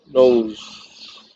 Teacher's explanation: N is alveolar and nasal.